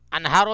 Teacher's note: انہارو پہ اظہار ہوگا، اخفا نہیں ہوگا. کیوں کہ نون ساکن کے بعد ہا حرف حلقی میں سے ہا آ گئی.